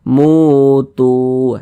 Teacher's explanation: mutu begitu kedua-duanya ini mad thii dan kedua-duanya panjangnya dua harakat mu kita panjangkan dua harakat Tu juga kita panjangkan dua harakat · Mu kita panjangkan 2 harokat, tu juga kita panjangkan 2 harokat. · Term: mad tabi'i